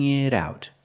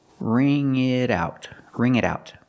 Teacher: The T in it changes to a fast D because it's between vowels.